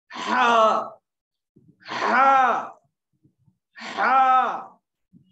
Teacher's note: दरमियानी हलक से 2 हरूफ आइन हा, आइन हा निकलते हैं